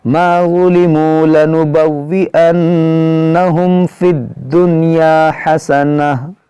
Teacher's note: नून साकिन के बाद या है, यहाँ पर इदगाम होना चाहिए, मगर यहाँ पर इदगाम नहीं होगा, यहाँ पर इजहार मुतलक होगा